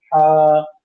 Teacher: तो इस ह को अदा करने में मुंह से हवा हमारे ज्यादा निकली हा और ये हलक के बीच के हिस्से से अदा होती है। बीच हलक से ये हा अदा होगी और इसको अदा करने में मुंह से हवा ज्यादा निकलेगी